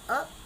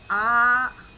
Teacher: जब मैं बोलूँगी अ तो उसमें बड़ा कम समय लगेगा अ, और जब मैंने बोला आ तो उसमें समय ज़्यादा लगता है। यानी लघु से दीर्घ में कुछ थोड़ा सा समय ज़्यादा लगता है, कुछ स्ट्रेस ज़्यादा आता है, कुछ आघात ज़्यादा आता है, शब्द पे जो प्रेशर देते हैं वो ज़्यादा आता है, जो ज़ोर है वो ज़्यादा आता है।